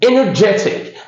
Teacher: So the stress is on the third syllable.